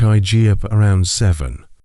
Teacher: The T in get often disappears. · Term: weak forms